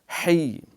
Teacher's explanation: ہا گلے سے اچھی طرح نرمی سے جماؤ سے رگڑا کھاتی ہوئی